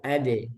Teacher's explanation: Jangan adu karena dal tipis. Kalau adu ini tebal.